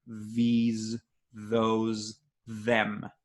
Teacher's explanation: if I add some vibration of my vocal folds, I'll get these, those, them